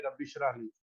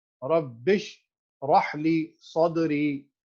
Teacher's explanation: با اور شین جو ہے نا آپس میں کنیکٹ ہو رہے ہیں۔ ربش راہ لی ہے، شرح لی نہیں ہے۔